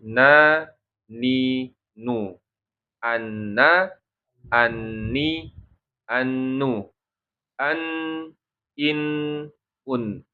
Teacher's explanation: Nun itu tempat keluarnya ujung lidah. Ujung lidah, benar ujung lidah menyentuh dengan gusi atas ya. Gusi atas disentuhkan atau ujung lidah menyentuh dengan gusi atas ya. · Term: huruf nun